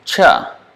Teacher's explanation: the tongue is touching at the middle of the hard palate sure it's not the tip of the tongue that is touching